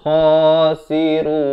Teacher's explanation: Kha, makhrajnya di hujung kerongkong.